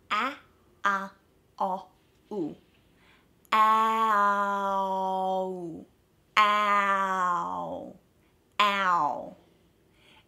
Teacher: the short sounds that are used together to create this long sound are a, ah, o, and ooh, all short sounds. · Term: diphthong